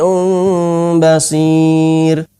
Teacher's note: Mba semi Um Bachir tanwin bertemu dengan Mba semi Um Basyir cara terbagus dalam membaca ikhfa adalah eh pengucapannya itu dua bibir ini tidak ditempelkan secara sempurna bukan mimbadi Hai akan tetapi agak ada renggangan sedikit guru kami